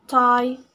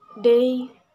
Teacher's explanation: These consonant sounds are made when the tongue tip contacts the alveolar ridge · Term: alveolar sounds